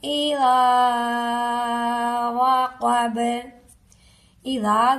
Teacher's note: اذا ذال کے ساتھ الف ہے، ایک الف کے برابر لمبا کر کے پڑھیں گے. وقب، با حروف قلقلہ میں شامل ہے، جب ہم اسے ساکن کریں گے تو با پر قلقلہ ہوگا.